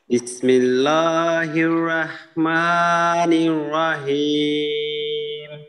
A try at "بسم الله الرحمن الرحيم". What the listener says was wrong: আচ্ছা এখানে এই হায়ের দিকে কিন্তু আর একটু খেয়াল করতে হবে রহমানির রহিম হ ha hi hu rahmanir rahim ji arekbar